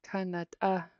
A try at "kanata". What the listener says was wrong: Gotta hear the T. Kanata.